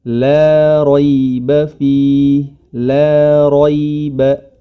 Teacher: Huruf ra pada kedua kata tersebut memiliki harokat fathah, maka harus ditebalkan ro